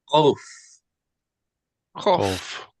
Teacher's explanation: K made further back in the mouth than normal.